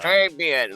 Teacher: the R in Trey is not a hard Spanish R, but a softer French R, and the final N is nasal. So sounds like it's kind of coming through your nose, basically.